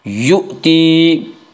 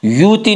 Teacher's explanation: حمزہ کو جھٹکے سے پڑھیں گے ، یؤتی، یوتی نہیں پڑھیں گے، حمزہ کو جھٹکے سے پڑھیں